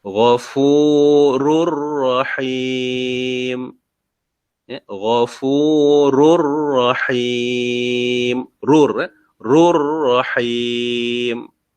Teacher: Okey, di sini tengok hukum tanwin, iaitu huruf 2 baris di hadapan bertemu dengan huruf ra. Jadi kita baca idgham bila gunnah.